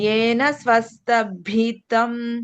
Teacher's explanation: బి కాదు భి మహాప్రాణం ఉంది కదా